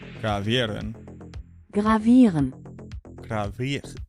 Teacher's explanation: It's when a vowel is going into an R syllable, where the R becomes like kind of silent.